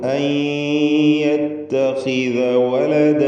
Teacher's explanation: ഖാഇന് കുറഞ്ഞ തഫ്ഖീമാണ് കൊടുക്കുക, കസ്റ ആയതുകൊണ്ട്.